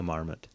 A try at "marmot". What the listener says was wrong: Wrong emphasis and the wrong syllable.